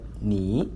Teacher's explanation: ni, falling and rising